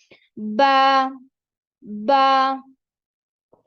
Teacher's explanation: जो दोनों होठ है इनका जो तरी वाला हिस्सा होता है अंदर वाला हिस्सा व आपस में मिलता है तो बा बहुत आसानी से अदा होता है